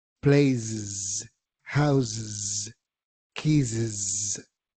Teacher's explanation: gráficamente sería una e, pero en términos de pronunciación sería una i corta